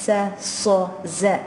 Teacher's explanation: Al-safir is the whistling sound that you get in the sod and the sin and the za